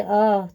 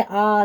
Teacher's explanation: देखिए अ बोल कर देखिए, अ थोड़ा खुलेगा। जब आप आ बोलेंगे आ, तो विवर्त यानी कि पूरा मुंह आपका खुलता है।